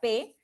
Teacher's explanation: se produce un cierre momentáneo de la salida del aire que luego se debe escapar con fuerza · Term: oclusivas